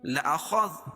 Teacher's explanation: خا کو موٹا پڑھیں گے ذال کو باریک پڑھیں گے